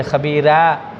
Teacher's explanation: ایسے ہی را، جب آپ نے دیکھا کہ را کے اوپر زبر ہو، خبیرہ، تو روایت ورش کے اندر یہ خبیرہ، را باریک ہو جائے گا